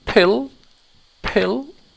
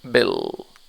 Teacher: word pill the like the piper is moving or swinging why because there's some air coming out of my mouth and this is an aspirated sound